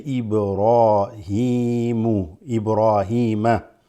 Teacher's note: the ra is a full mouth letter